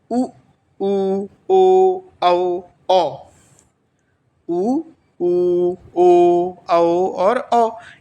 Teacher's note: इनको बोलने पे जो होठ हैं वो वृत्ताकार हो रहा है। जो ओष्ठ है वो वृत्ताकार हो रहे हैं। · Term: वृत्ताकार स्वर